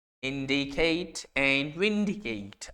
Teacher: perfect और slant rhyme in which the emphasis falls on the third to last syllable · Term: डेक्टेलिक